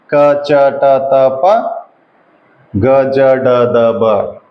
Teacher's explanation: ಕಡಿಮೆ ಉಸಿರು ಕೊಟ್ಟು ಉಚ್ಚರಿಸಲಾಗುವ ವ್ಯಂಜನಗಳನ್ನು ಅಲ್ಪ ಪ್ರಾಣಾಕ್ಷರಗಳು ಅಂತ ಹೇಳ್ತೀವಿ